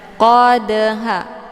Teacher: terdapat di pertengahan kalimat ini dinamakan dengan Qalqalah sugro cara bacanya huruf dalnya dipantulkan dengan pantulan ringan · Cara bacanya, huruf dalnya dipantulkan dengan pantulan ringan. Qadha, keluar bunyi de sekedar saja. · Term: qalqalah sughra